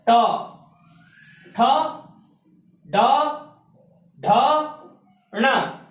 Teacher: तीसरा वर्ग है ट वर्ग। ट वर्ग का उच्चारण स्थान क्या है? मूर्धा स्थान।